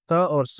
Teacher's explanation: दंत से निकलने वाले हैं